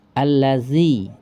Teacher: gigi dengan ujung lidah hampir dempet, hampir menempel, tapi tidak menempel.